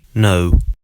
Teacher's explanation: In the UK, the sound is a schwa followed by an uh as in put. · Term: O diphthong